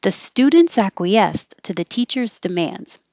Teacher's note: i would have put stress on the end acquiesced acquiesced but i'm putting the stress for the sentence on students